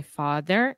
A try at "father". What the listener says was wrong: In the word father, this is the A sound. So just like prato, chato, rato, father. I heard fode.